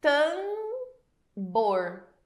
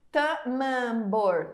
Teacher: Eu não tenho a separação do fonema A e do fonema M. Eu não falo tamambor. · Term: prolongamento do A